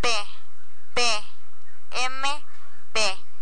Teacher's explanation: la articulación podemos clasificar las consonantes en las categorías siguientes bilabiales esas consonantes se producen acercando o cerrando los labios